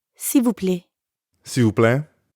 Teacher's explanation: when speakers are in a hurry, that L sound at the end often gets left off.